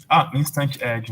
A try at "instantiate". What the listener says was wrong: Não. Instantiate. Tudo junto. IAT aí falta. Não é aid. Instantiate.